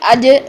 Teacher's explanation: جیم میں سانس بھی بند ہو جاتی ہے, آواز بھی بند ہو جاتی ہے